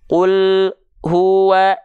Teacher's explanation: Menjeda atau memutus suara huruf lam dengan hu-nya.